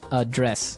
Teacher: the verb address has the the stress on the second syllable